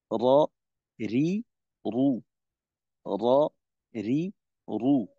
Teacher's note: জিহ্বার আগার পিঠ তার বরাবর উপরের তালুর সঙ্গে লাগাই উচ্চারিত হয় র